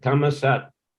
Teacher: If s is in the end of a syllable, they will pronounce ta.